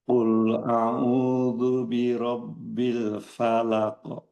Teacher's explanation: Usahakan setiap huruf-huruf yang tipis action-nya itu optimal a maksimal a bukan o. O o tidak tapi a fa bukan fo.